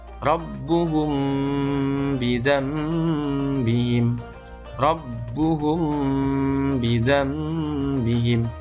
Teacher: memanjangkan bunyi M dari dengungnya mim yang pertama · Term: ikhfa syafawi